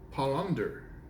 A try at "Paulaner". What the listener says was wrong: Oh, now you added a D.